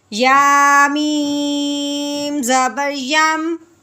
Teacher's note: ٹھیک ہے، یہاں تو میم ساکن کے بعد نہ تو میم ہے نہ میم ساکن کے بعد با ہے، تو یہاں پہ بغیر غنے کے اظہار کے ساتھ پڑھیں گے